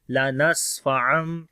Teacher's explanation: سین کے اوپر صفت ہمس اور صفت صفیر ہوگی